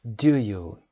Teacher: Do you؟ این صدا falling intonation داره. Do you؟ To check information.